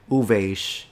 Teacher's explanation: the S is a retracted S because she pronounced it like a sh instead of a s